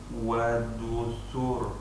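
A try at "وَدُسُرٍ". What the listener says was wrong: Nah, tapi jangan ada jedanya ya, seolah-olah ada tasydid kalau ada jedanya.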